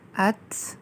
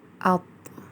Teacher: بعد تا اور طوا کو دیکھیں گے حمزہ ساتھ لگانے سے ات، اط، یعنی تا کو باریک ادا کیا جائے گا اور طوا کو پر تھوڑا منہ گول کر کے اور موٹا پڑھا جائے گا